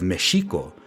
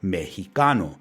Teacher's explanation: This happened when the Spanish language underwent a change called a consonant shift and the sh sound of the letter x transformed into an aspirated h sound